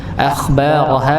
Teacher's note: akhbaroha sama khya ditebalkan akhbaroha ha bnya dibaca Dua harakat Hnya